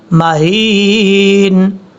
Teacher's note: میم کے اوپر شد ہونے کی وجہ سے غنہ کیا جائے گا